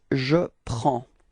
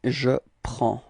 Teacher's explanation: we've got S at the end and then D as well, but then we don't pronounce them. So actually the only thing we will pronounce for this form is P-R-E-N, and it's the sound prend.